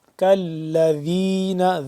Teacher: ذال کو نرمی سے پڑھیں گے جیسے ثا ویسے ذال. زبان کی نوک کو دونوں دانتوں کے درمیان سے ذرا سا باہر کی جانب نکالیں گے تو ذال ادا ہوگا نرمی سے